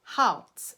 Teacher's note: It's a postvocalic R, which means it's just right after a vowel. And it's kind of like a cross between a schwa with R coloring and that uvular R that we talked about before.